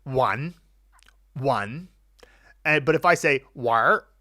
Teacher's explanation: So, for example, I might say one, but if I say war, there's no N anymore. It just kind of gets melted into the R and lost.